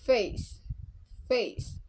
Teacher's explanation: a as in face face in British English pronouns with uh Glide from a to E in example face face in American English similar to British English